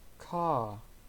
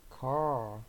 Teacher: In British English, when R comes after a word in the same syllable, the R is not pronounced. In American English, the R is pronounced.